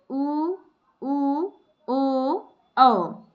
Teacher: वृत्त मुखी स्वर को वर्तुलित स्वर भी कहते हैं। ऐसे स्वर जिनका उच्चारण करने में होठ जो है वृत्ताकार हो जाए, गोल हो जाए